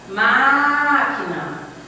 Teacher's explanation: Você demora mais no má. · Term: sílaba tônica